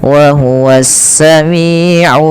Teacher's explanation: Yang kedua sebelumnya ada huruf mad. Maka di lim ini kita boleh memanjangkan limnya dua, empat atau enam. Tapi kita ngambil yang tengah-tengah saja. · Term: mad arid lisukun